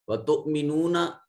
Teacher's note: تؤمے میں حمزہ ساکن ہے، جھٹکے سے ادا ہوگا